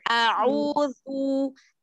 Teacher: Huruf zu itu ujung lidah, makhrajnya ujung lidah bertemu dengan dua gigi seri atas. Dan ini sama, harokatnya adalah dhammah.